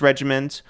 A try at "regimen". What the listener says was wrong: By the way, it's regimen. You said regiment.